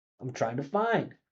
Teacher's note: Listen how much find stands out when I make those function words small.